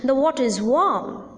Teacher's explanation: the sentence or the sense is incomplete and hence a rising tone is used